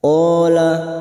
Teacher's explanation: qo fathah diikuti Alif dua harakat kita panjangkan Mad thii qol rojulani rojulani lam yang berharakat Alif kecil di atas at